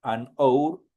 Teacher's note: Anour. En la h no tiene ningún sonido y directamente el sonido se va sobre la vocal o.